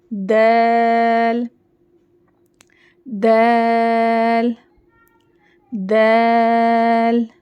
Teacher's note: اس کو دول نہیں پڑھنا, دول نہیں, دال باریک پڑھیں گے. دال زبان کی نوک اوپر کے دانتوں کے جڑوں کو لگا کر